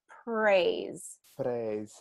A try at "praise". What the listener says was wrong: your tongue is wanting to come up and and touch and we'll have to keep it down a little bit